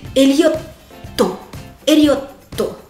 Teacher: La spécificité, c'est qu'il faut retenir le dernier T.